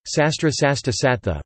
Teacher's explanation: the liquid is assimilated to the preceding consonant, and the cluster behaves like sibilant-stop sequences